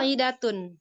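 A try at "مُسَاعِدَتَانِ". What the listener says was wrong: enggak panjang i-nya.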